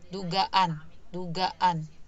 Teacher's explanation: Jadi kayak ada glottal stop, ada stop sebentar, ada jeda sebentar. Itu dihitung satu fonem. · Jadi kayak, setelah fonem A terakhir, setelah fonem A di kata duga itu seperti ada stop sebentar, kemudian ke an-nya